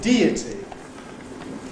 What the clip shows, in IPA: ˈdiːəti